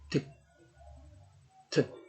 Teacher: And the modal description, oral stop, place of articulation, alveolar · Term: T sound